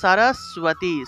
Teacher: বফলা থাকলে এটা মূলত সুয় উচ্চারণ হবে। সুয় উচ্চারণ করতে হবে, অর্থাৎ এইভাবে সুয় উচ্চারণ করতে হবে।